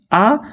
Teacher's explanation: जबकि आ वृत्ताकार स्वर नहीं कहलाता है, ये अवृत्ताकार स्वर कहलाता है, या फिर इसको प्रसरण स्वर भी कहते हैं।